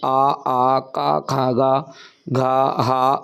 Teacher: इन वर्णों को कंठ्य वर्ण कहते हैं क्योंकि उच्चारण में कंठ यानी गला का प्रयोग होता है